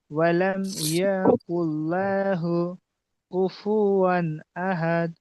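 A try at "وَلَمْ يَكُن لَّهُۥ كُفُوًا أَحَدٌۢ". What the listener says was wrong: কুফু টান হয়ে গেছে, আরো একবার।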